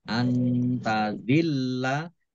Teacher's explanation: Panjang harus 5 harokat. Tazillah nun sukun bertemu dengan huruf ta, bacaan ikhfa dibaca samar-samar. Lamnya dibaca double, ada tasdidnya.